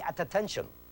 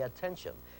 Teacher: You say attention. That could be spelled phonetically with just one T. It makes one t sound.